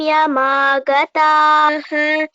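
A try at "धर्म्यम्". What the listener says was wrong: Bhagini, it is not dhamya, it is dharmya. Ra should be heard. Sa dharmya magataha.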